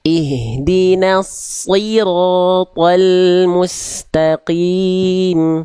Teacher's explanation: huruf tebal, tapi tetap vokal i-nya jelas. Ihdinas siratal mustaqim.